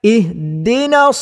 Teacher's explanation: huruf sad mesti dibaca dengan tebal